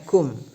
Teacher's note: mimnya itu punya sifat tawassut ya, tidak ditahan dan tidak terlalu terburu-buru ya, pertengahan.